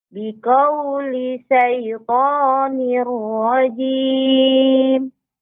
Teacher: ini sudah bagus, tidak ada jeda pada huruf lamnya.